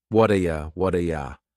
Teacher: that t at the end of the word what is going to change to a d sound. This is really typical of American English where a t that's surrounded by vowel sounds is going to change to a d. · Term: flapped T